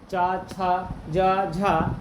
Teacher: चा छा जा झा ये सब क्या है भाई, तालव्य ध्वनियाँ हैं।